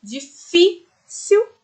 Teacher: Mesmo se não tivesse o acento, nós sabemos na palavrinha difícil. O fi tem um som muito mais forte que as outras duas, né? Então, se trata de uma paroxítona.